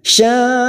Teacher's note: hamzah ini kita baca tegas, jangan sampai diseret, jangan sampai amil, tetapi amil.